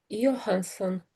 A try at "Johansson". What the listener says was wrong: Yeah, that's fantastic. Yeah, Johansson.